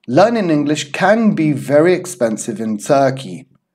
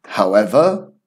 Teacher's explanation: full stops, full breath, intonation goes down, and then before a comma means half breath, and the intonation goes up.